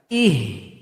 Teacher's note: H-nya besar keluar dari tenggorokan paling bawah.